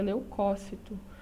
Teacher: tá então se a gente for lembrar pronúncia correta leucócito esse essa antepenúltima sílaba é a tônica portanto é uma proparoxítona